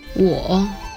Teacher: with the third tone, or falling rising tone